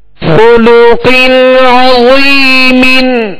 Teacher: تنوین کے بعد حروف حلقی میں سے عین ہے, لہذا یہاں غنہ نہیں کریں گے